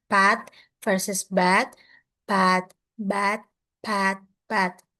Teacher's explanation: P is voiceless and B is voice. Both consonants are bilabial plosive, meaning they are made with both lips